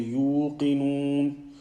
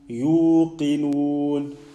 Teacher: The sound at the end must not come from the nose.